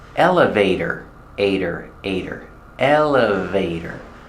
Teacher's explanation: And the T is pronounced as a fast D.